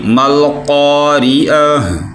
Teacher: اگر ادھر وقف کرنا ہے تو تا جو ہے اس کی جگہ ہا پڑی جائے گی، تا نہیں پڑی جائے گی. ما القارعۃ یعنی ہا کی آواز بھی نکلنی چاہیے.